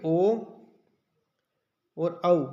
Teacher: ओ और औ इनका उच्चारण स्थान जो है कंठ और होठ दोनों से ओस्ट दोनों से होता है समझ में आ गया होगा ठीक